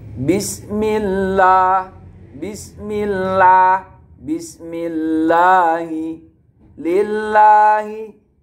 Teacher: lafaz Allah ketika jatuh setelah kasroh, maka hukum bacaannya dibaca tarqiq atau dibaca tipis